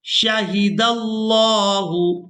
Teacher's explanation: लफ्ज़ अल्लाह के लाम को पूरा अदा करेंगे क्योंकि लफ्ज़ अल्लाह के लाम से पहले वाले हरफ के ऊपर ज़बर है